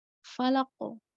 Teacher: Jadi harus berpantul karena huruf qalqalah itu kuat, maka harus dimunculkan, nggak boleh samar. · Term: qalqalah kubro